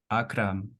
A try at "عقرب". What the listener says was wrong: عقرب. With the B. last.